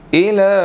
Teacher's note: लाम के ऊपर खड़ी ज़बर है और छोटी मद भी है, इसलिए इसको 2 to 3 सेकंड्स हमने लंबा करना है